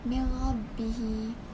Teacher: digabungkan bacaan nun ke dalam huruf selepasnya tanpa dengung. Pastikan suara huruf ra atau lam tidak dipanjangkan untuk mengelakkan suara dengung. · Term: idgham bila gunnah